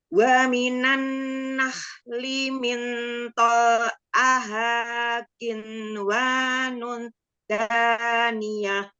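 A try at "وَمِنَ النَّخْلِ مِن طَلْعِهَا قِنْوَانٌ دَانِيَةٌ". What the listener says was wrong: Waktu qin wa nun ketemu dal kan? Nah, dengung qin wa nun da.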